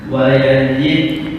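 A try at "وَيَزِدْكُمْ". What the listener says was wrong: Bukan wa yaji. Wa yazidkum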